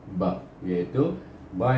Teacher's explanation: Di bibir kita, dengan mulut kita tertutup ba, terbuka terus saja. Dari tutup buka terus bunyi huruf ba.